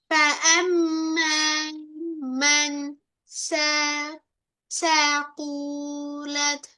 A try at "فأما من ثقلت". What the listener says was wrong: হ্যাঁ, কাফটা এখানে লম্বা হবে না, তাড়াতাড়ি পড়তে হবে। আমি বলছিলাম যে হরকতের উচ্চারণ তাড়াতাড়ি করতে হয়। এই যে আম্মা, আমি আগে বলছিলাম ইয়াকুনুন নাসুর মধ্যে নুনের উপর তাসদিদ আসছে, এই জন্য নুনকে আমরা গুণনা করে পড়ছি। এখানে আমরা পেয়েছি মিমের উপর তাসদিদ আসছে। সো মিমটার মধ্যেও আমরা গুণনা করে পড়তে হবে, আমাদের নাকের বাঁশি থেকে আওয়াজটাকে বের করতে হবে পাতলা করে।